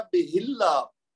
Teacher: اسی طرح یہ دیکھ لیجئے بے ہی ہے اور آگے اللہ ہوا ہے تو یہ پڑھا جائے گا بے اللہ، یعنی ہا کو ہم لمبا اس لیے نہیں کریں گے کہ آگے اللہ کا جو حمزہ ہے وہ حمزۃ الوصل